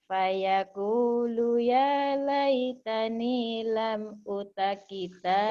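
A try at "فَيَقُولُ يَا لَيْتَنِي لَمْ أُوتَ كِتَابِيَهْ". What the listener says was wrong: O-nya panjang. O-nya panjang. O-nya panjang. O ini panjang. Ibu tadi bacanya pendek. U-nya kan panjang nih Matobi. Lam u. Ini U, ini U ini. Lam u. Nih Matobi. Doma dengan wawu mati nih. Yang ini nih Bu. Nih, Ibu tadi bacanya tadi pendek. Lam u tak? Lam u.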